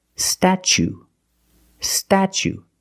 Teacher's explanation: the t is pronounced CH like chicken and change